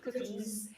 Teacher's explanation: the S for most of the plurals is what I call the bumblebee S. Buzz. Like a mosquito or una abeja.